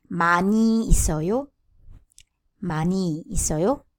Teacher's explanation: Ending consonants are two, N and H sound. But usually we only pronounce N.